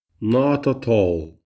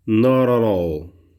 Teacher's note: avec le flap T de l'accent américain